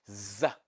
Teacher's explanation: that is voiced alveolar fricative